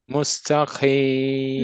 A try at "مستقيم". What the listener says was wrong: Not ta. You still say ta. So repeat musta many times, as I said to the. Mustaqim, you're still repeating musta.